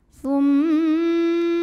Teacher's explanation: Lalu ada hukum gunnah musyaddadah karena mim bertasydid. Cara bacanya dengung, bunyi M-nya tahan kurang lebih 2 harokat.